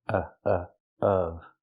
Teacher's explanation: Remember the short sound like cup and up, closed and relaxed.